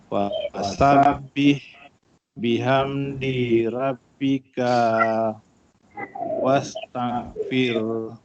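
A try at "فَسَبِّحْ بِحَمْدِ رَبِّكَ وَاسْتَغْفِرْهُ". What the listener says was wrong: Bihamdi di tak panjang. Fasabbih bihamdi rabbika wastaghfir. Bihamdi rabbika wastaghfir. Ka tak panjang. Bihamdi rabbika wastaghfir.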